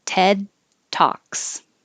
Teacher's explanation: as you go back three three ted talks don't say ted just hold the tongue in the d position which is the same as the t position so ted talks and no l and talks seven free now